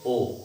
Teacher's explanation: ऐसे स्वर जिनको बोलते समय जो हमारा मुख है, जो ओष्ठ है, ओष्ठ कहना ज्यादा सही होगा, जो ओष्ठ है वो वृत्त का रूप धारण करे, यानी वृत्त का आकार बने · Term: वृत्ताकार स्वर